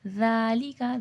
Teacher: ذال نرمی سے پڑھا جائے گا، نرمی والا حرف ہے، اور کھڑا زبر ہے، تھوڑا کھینچ کے پڑھا جائے گا